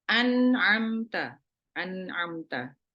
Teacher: nun sukun tapi di depannya ini adalah huruf-huruf yang keluar atau makhrajnya di tenggorokan, maka nun yang sukun ini dibaca jelas. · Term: nunnya dibaca jelas